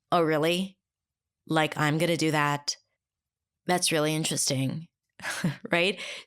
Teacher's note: That tone, that quality of voice, that little rise in pitch at the end, that's another pattern that people use. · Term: Sarcasm